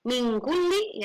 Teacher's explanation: Ini adalah ikhfa hakiki yang bunyinya ang dan angnya tipis ya